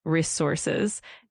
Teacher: also in resources, keep that emphasis on the second syllable.